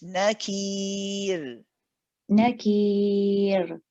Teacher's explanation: Just remember the ra at the end. We don't want an airy ra. We want your voice.